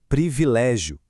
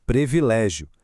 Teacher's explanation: Aqui, o detalhe técnico é a articulação exata das vogais. Precisamos marcar muito bem os dois primeiros sons de i na hora de falar, sem cair naquela armadilha super comum de relaxar a pronúncia e trocar o primeiro i por um e.